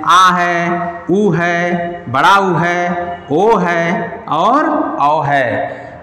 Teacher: जीभ के पिछले हिस्से से जिन वर्णों का, स्वर वर्णों का उच्चारण होता है वे पश्च स्वर कहलाते हैं।